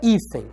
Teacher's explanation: A palavra hífen é uma paroxítona, porque a penúltima sílaba é tônica